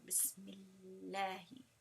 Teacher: the Dhamma or Fatha joins straight to the Lam and you don't hear the Alif at all. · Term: Hamzatul Wasl